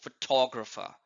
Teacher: And similarly, in the word photographer, the stress is on TO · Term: word stress